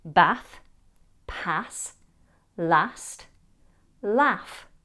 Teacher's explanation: In RP, the same vowel is used in words like bath, pass, last, and laugh. Now, in many regional UK accents and in American, the vowel in these words is a short a. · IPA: /æ/